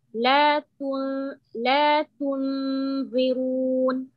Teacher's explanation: Now make the ظاء heavy all the way.